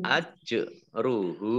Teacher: jim sukun bacaan qalqalah ya, huruf qalqalah dibaca memantul ajruhu. Hak domah terbalik mat silah qasirah ya, karena tidak bertemu dengan huruf alif atau hamzah di depannya sama dengan mat tabi'i dibaca panjang 2 harokat.